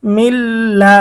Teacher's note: এটা আবার ঈদগামে বেলাগুন্না, কারণ কি নুন সাকিনের পরে বেলাগুন্নার হরফ লাম এসেছে, গুন্না ছাড়া মিলিয়ে পড়তে হবে।